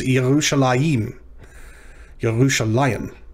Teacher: the hirek under the mem at the end is pronounced before the mem, not after. So it's almost like a furtive hirek, which doesn't exist.